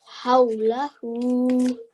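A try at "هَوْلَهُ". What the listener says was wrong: Very nice. The ha came from your throat. Well done.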